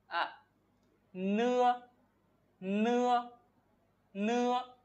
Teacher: chữ nưa ở cái đầu lưỡi của mình nó sẽ được chạm vào so với cái ngạc dưới ở hàm răng dưới như thế này ạ.